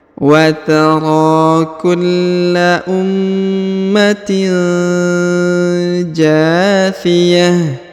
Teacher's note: huruf tanwin in bertemu dengan ja, maka didengungkan dan disamarkannya